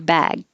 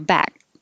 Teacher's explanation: The only thing that's really changing is the vowel gets longer before a voiced sound. So your bag, that's why I put two A's to represent that it's stretched a little longer.